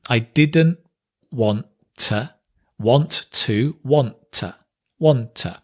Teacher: So here we connect the didn't and the want, but we drop the T.